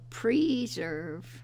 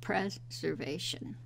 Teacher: there are some vowels that change from a long vowel sound to a schwa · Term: vowel alternation